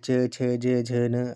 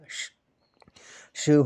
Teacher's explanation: तालाव्य व्यंजन यानी कि तालु से जिनका उच्चारण होता है